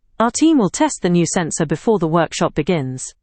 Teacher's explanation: Will appears between the subject and the main verb and is often pronounced lightly.